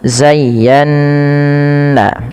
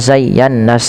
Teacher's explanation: pada lafal nun yang bertasydid ini wajib ditahan bunyi n-nya karena ia ada bacaan gunnah. Karena ada bacaan gunnah sehingga dipantulkan ditahan, bukan dipantulkan, ditahan, zayyana ya.